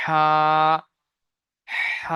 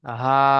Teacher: এই বড় হাটা পড়া হয় গলার নিচের থেকে পাতলা আওয়াজে